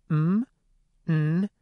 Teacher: That's what makes these sounds nasal. Air is flowing through the nose, but it's stopped from flowing through the mouth. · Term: nasals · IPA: [n, m, ŋ]